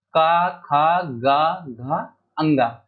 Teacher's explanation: क वर्ग जो है वो कंठ में आता है। कंठ इसका उच्चारण स्थान जो है कंठ है। इसमें क ख ग घ अ ङ ये पांच जो है आपके व्यंजन आते हैं।